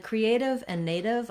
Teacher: Creative and native both have the stress on the A and they have the diphthong A, so it's a long vowel there